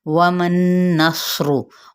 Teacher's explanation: वमन नस्रु, वाव होंठों की ना तमाम गुलाई के साथ, मीम की ज़बर को नून के साथ और नून पे गुन्ना करते हुए, स्रोत हरूफ मुस्तालिया में से इसके साथ मिलाएंगे, रॉ की पेज को लंबा नहीं करेंगे।